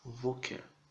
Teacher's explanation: A sílaba tônica é o Vo. Então lembre-se de colocar a ênfase no Vo.